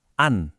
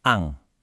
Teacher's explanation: bunyi n-nya harus diucapkan apa adanya, enggak pakai dengung, enggak pakai samar-samar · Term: izhar